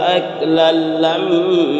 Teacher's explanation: لما یہاں پر گنہ ہوگا، میم مشدد ہے اس لیے